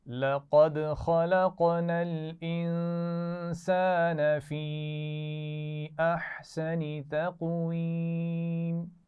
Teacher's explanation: لقد قلقلہ ہوگا دال پر